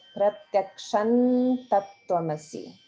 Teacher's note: that Anuswara will be like na sound because ta follows